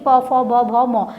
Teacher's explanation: ये जो प वर्ग होता है ये हमारा ओष्ठ उच्चारण, इसका जो स्थान होता है वो उच्चारण स्थान क्या होता है ओष्ठ होता है, यानी कि प फ ब भ म म तक ये हमारे क्या होते हैं ओष्ठ होते हैं।